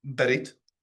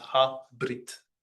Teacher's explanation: the shva, the upside down e in the transliteration is sometimes pronounced and sometimes isn't.